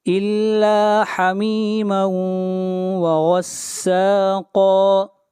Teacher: یہاں پر تنوین کے بعد حروف یرملون میں سے واو ہے، ادغام مع الغنہ ہوگا · غین اور قاف کو موٹا پڑھیں گے، یہ دونوں حروف استعلاء میں سے ہیں